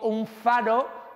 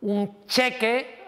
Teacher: la nasal tiende a tomar el lugar de articulación de la consonante que le sigue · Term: asimilación